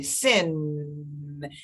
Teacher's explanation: The tip of my tongue is pressing up against the back upper teeth. The back of the top teeth, right?